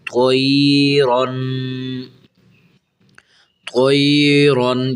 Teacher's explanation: تو یا زبر توئی، را دو زبر رن، طیرن، طیرن، یہاں حرف طا بھی موٹا کرنا ہے اور یہ را جو کھڑی ہے یہ را کو بھی موٹا کرنا ہے